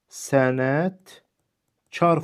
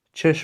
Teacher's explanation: Yəni burada olan k samiti g-ya keçmir.